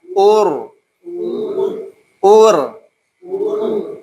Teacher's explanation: u-nya monyong pas ketemu ro